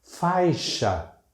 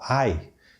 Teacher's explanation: Temos o ditongo AI, o ditongo decrescente de novo, a vogal e a semivogal